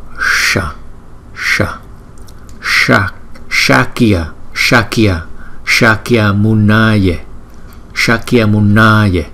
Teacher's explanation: chúng ta cong lưỡi lại đọc sha, sha